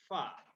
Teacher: ujung dua gigi seri atas bertemu bibir bawah bagian dalam